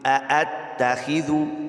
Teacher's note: ذال کو نرمی کے ساتھ پڑھنا ہے، اس کی جگہ زا نہیں پڑھ دینا